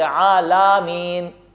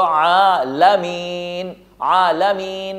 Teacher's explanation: میم کو کھینچا، کیوں؟ اس لیے کہ میم کے بعد یا مد موجود ہیں جس کو یا مدہ کہا جاتا ہے